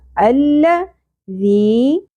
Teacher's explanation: ذال نرمی سے ادا ہوگا اور یا مدہ ایک الف کے برابر کھینچنا ہے ، الذی لہو، لام کی زبر زیادہ نہیں کھینچی جائے گی،